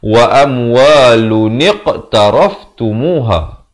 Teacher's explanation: Tapi nun baris bawah datang selepasnya qaf yang bertanda mati jadi hukum qalqalah. Kena ada pantulan.